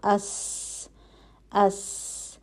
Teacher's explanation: हवा का चलना महसूस होता है हमस आवाज जारी रहती है · ہوا کا چلنا محسوس ہوتا ہے, ہمس. آواز جاری رہتی ہے.